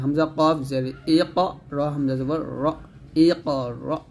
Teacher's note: জিহ্বার গোড়া এবং তার বরাবর উপরের তালুর সঙ্গে লাগিয়ে এই মাখরাজটা আসবে। অবশ্যই জিহ্বার গোড়াটা উপরের তালুর সঙ্গে লাগিয়ে উচ্চারণ করতে হবে।